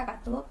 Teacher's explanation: Pada kata katup, huruf P diucapkan secara tidak lepas, dikarenakan bibir masih tertutup.